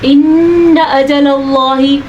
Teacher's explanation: نون کا غنہ ادا کرنا ہے, اللہ کا نام پر پڑھنا ہے